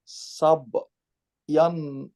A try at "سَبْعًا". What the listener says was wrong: ইয়ান কেন? আইন ফাথাতাইন কি হয়? আন। হ্যাঁ, ইয়ান কেন হলো? ইয়া হলে হতো।